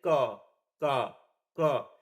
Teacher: क इसमें क्या हो रहा है कि स्वास हमारा कम निकल रहा है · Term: अल्पप्राण व्यंजन